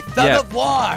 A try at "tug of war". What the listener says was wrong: It's pronounced tug of war. Okay, why would it be thug?